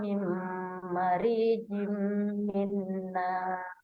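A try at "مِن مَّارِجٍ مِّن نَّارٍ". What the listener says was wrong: Oke, tadi agak panjang ya mimnya. Mimma ditutup bibir, nun ketemu ma. Mimma rijim nar. Jadi dia idgham bigunna dua-duanya ya. Jadi ditutup bibir.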